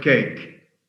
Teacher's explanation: So the sound of the A here, the sound of the letter A is the diphthong A and E combined together.